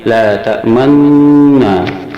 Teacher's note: nun bertasid ini disuarakan antara fathah dan dhamma sambil kedua bibir dimuncungkan ke depan, sehingga nun ini diuraikan menjadi dua, yang satu nun mati, yang kedua nun yang dipatahkan. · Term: ismam